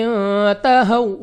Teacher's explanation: واو ساکن سے پہلے زبر، واو لین، بغیر کھینچے بغیر جھٹکا دیا پڑھیں گے، یعنی جلدی سے